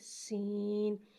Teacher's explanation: سین کو ایک الف یعنی 3 مقدار کھینچ کے پڑھیں گے اور سین میں سیٹی کو ظاہر کریں گے